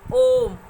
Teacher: ओम का जब उच्चारण आप करते हैं तो ओ को थोड़ा लंबा खींचते हैं। हर्ष स्वर की जैसे ओ बोलेंगे या अ बोलेंगे, उससे 3 गुना समय, ऐसे 3 गुना समय आपको ओम का उच्चारण में लगता है, तो ये प्लुत स्वर कहलाते हैं।